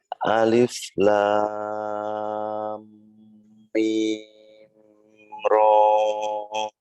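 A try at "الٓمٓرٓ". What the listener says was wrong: Ah, rohnya jangan kepanjangan. Ini yang masuk mad tabi'i, hanya 2 harokat. La-nya 6. Alif lam ro. Jadi sekali lagi untuk diperhatikan, yang mad tabi'i harfi itu hanya dibaca 2 harokat.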